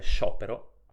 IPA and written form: ʃopero (sciopero)